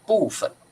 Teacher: 不过在北方他们会念部分，他们好像会念成轻声